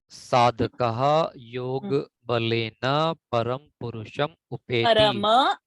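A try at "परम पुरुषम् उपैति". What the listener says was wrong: Parama, not Param.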